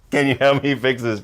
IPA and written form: kæn juː hɛlp miː fɪks ðɪs (CAN YOU HELP ME FIX THIS)